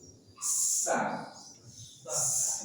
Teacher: sin punya sifat yang pertama adalah sofil, desis. Sa. Ini desis.